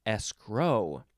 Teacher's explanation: you can also emphasize the second syllable